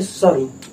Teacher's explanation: रा जो है बहुत थोड़ी देर के लिए, तो रा यहाँ पे आधा होगा।